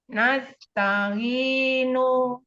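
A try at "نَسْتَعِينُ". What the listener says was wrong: Jangan lidahnya jangan ke depan. Nas. Nas. Nah, itu ditahan sama lidah.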